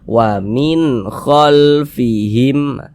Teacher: karena dia tidak didengungkan, baca pendek. Wa min khalfihim, begitu, pendek saja. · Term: izhar halqi